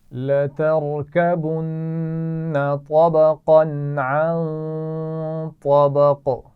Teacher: طبقا عن طبق یہاں پر غنہ ہوگا کیونکہ نون ساکن کے بعد طا ہے. اور طبق طا موٹی پڑی جائے گی اور قاف پر قلقلہ ہوگا.